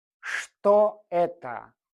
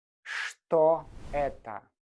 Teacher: The letter Ch here actually makes a sh sound. So we say что это?